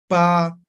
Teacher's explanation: La letra P articulamos con los labios, ¿no ven? Entonces, por eso se llama bilabial, ¿no? Dos labios, pa, ¿no ven?